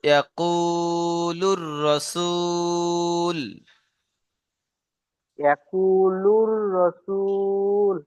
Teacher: ওয়াও সাকিনে ডান দিকে পেশেছে, এটি হলো ওয়াও মাদ্দা, ওয়াও মাদ্দাকে একালি পরিমাণ টান দিয়ে পড়তে হবে।